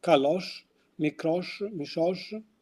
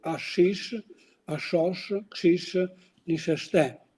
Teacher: Another feature is the palatal pronunciation of sh, which is pronounced sh in especially in Palasa, Kalosh, Mikrosh, Mishosh, and these habits are extended in the Albanian villages of Himarë, where one can hear Ashish, Ashosh, Kshish, Nisheshte.